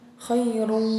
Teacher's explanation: Idgham bi gunnah itu tanwin ya, dhammah tain ya, bertemu dengan waw. Itu dibacanya gunnah ya, jadi berdengung.